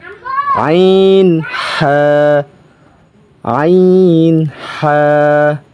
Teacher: দু নাম্বার মাখরাজ হলুকের মধ্যখান থেকে উচ্চারিত